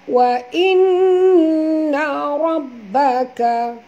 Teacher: Nun bertasydid. Wajib dengung.